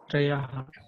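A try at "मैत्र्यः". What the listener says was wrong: Not Trayaha. In English, when you write, how do you write this? T-R-Y-A. Not T-R-A-Y-A. That is Traya.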